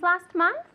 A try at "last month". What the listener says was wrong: remember to say the T for me.